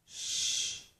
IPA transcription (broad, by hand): ʃ